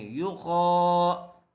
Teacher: خا الف زبر خا، یو خا، خا کو پر کر کے پڑھیں گے۔ خا کے اوپر کھڑا زبر ہے اس لیے تھوڑا کھینچ کر پڑھیں گے